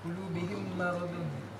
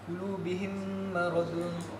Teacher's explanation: Qulubihim maradun, dia dengan kadar 2 harakat lah dengung. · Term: idgham mislain